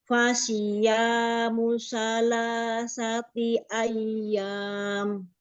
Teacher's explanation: mu-nya itu jangan dikasih hamzah mu-nya